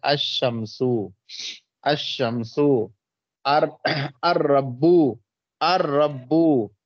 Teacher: الف لام کے لام کو حرف شمسی میں مدغم کر کے پڑھیں گے, یعنی لام کا تلفظ نہیں کریں گے. جیسے الشمسو, الشمسو, الربو, الربو, دیکھیے الربو, تو رابی کس میں ہو گیا, حروف شمسیہ میں سے ہو گیا.